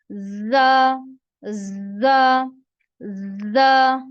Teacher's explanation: इसमें आपने सीटी की आवाज प्रोनाउंस करनी है। सीटी की आवाज आपकी आनी चाहिए, सीटी की तरह आपने इसको, इतनी ज्यादा भी नहीं आनी चाहिए, लेकिन इसको जोर से आपने प्रोनाउंस करना है, जोर से अदा करना है।